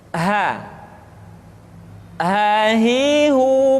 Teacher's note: dikeluarkan dari tenggorokan yang terjauh sama seperti kita mengucapkan huruf a a halo ha hi hi